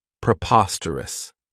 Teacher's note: this adjective has four syllables and the stress is on that second syllable Preposterous remember that OS has that schah that sound this means